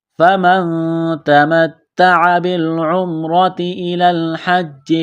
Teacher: نون ساکن کے بعد تا ہے، حروف اخفا ہے، غنہ کریں گے، آواز ناک میں چھپائیں گے ۔ فَمَن تَمَتَّعَ بِالْعُمْرَةِ إِلَى الْحَجِّ فَمَا اسْتَيْسَرَ مِنَ الْهَدْيِ، فَمَن